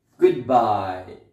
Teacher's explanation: so you can say good fast bye slowly